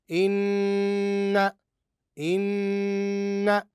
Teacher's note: ان ان اذا عرفنا الان النون المشدده كيفيه النطق بالنون المشدده تنطق النونو مشدده مع غنه ظاهره بمقدار حركتين